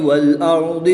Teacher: را ساکن سے پہلے حرف پر زبر ہے تو اس لیے اس را کو بھی پر یعنی موٹا پڑھیں گے